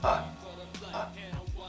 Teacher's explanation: this sound usually replaces an unstressed vowel so it's like generally it's basically a quick uh uh uh sound and sometimes people pronounce it so fast it's as if the vowel isn't even there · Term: shwah sound